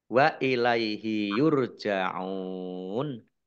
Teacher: Ain domah wawu sukun mat tobi'i, tetapi karena bertemu dengan huruf terakhir yang dibaca sukun karena waqaf, maka menjadi mat arid lis sukun. Dibaca panjang boleh 6, 4, atau 2 harokat.